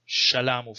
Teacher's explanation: Okay, and you see in most Semitic language, at least two of them have merged, like in Akkadian, especially Old Babylonian, S1 and S2 have merged and became palatalized. So you have sh, like in shalamu, for example.